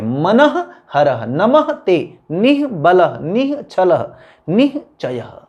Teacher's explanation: और दूसरी बात है कि हर जो पहला शब्द है उसके अंत में विसर्ग की साउंड आ रही है, विसर्ग की ध्वनि आ रही है जो ह की है